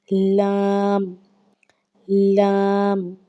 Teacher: زبان کا کنارہ اور دواہک سے ثنایا تک کے مسوڑوں سے ادا ہوتا ہے لام